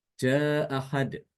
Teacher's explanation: Hamzah tersebut harakatnya fathah maka di sini Imam albazi cara membacanya adalah dengan membuang Hamzah pertama · Imam Al-Bazzi itu menghapus atau menghilangkan hamzah yang pertama